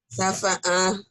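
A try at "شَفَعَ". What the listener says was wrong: shinnya gede. Syafa. Syafa.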